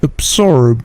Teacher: Absorb, absorb, menyerap atau mengisap. Perhatikan bunyi B-nya itu memantul sedikit. Absorb. Bunyi B ini biasanya memantul jika dia berdiri sendiri.